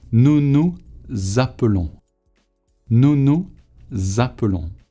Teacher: You must create a Z sound, as if the silent S becomes a Z. It should be nous appelons. · So the A sounds like za now. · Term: liaison